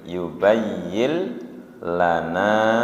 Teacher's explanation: hanya ditasdid tanpa ditahan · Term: idgum bila gunah